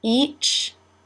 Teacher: Lips pull wide for the E as in she, and again the ch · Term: ch sound